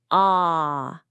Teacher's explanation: It's a much deeper, more open sound coming from the back of your throat. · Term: a sound